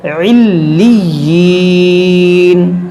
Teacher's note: لام مشدد ہے، یا مشدد ہے، اس کو پڑھیں گے دو بار. علیین، اور یہاں رکیں گے تو مد عارض کریں گے.